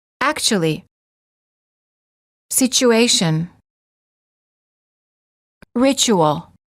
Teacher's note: t plus u is usually pronounced as CH as in church